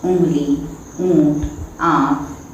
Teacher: अनुनासिक, इसका उच्चारण नाक और कंठ दोनों की सहायता से किया जाता है